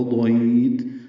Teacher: ضاد پر لمبا کریں گے، تا پہ ہمس